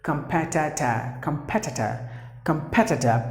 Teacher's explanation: P should be given more volume. That's the stressed syllable.